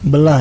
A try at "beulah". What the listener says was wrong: Bukan belah. EU. Seperti Bandung, orang Bandung tidak menyebut Bandung.